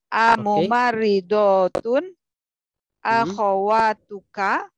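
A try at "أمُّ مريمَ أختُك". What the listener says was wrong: Ayo, ahsanti.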